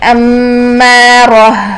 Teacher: اور جب ہم اس پر وقف کریں گے، امارہ، ہا ساکن میں سانس اور آواز جاری رہتی ہے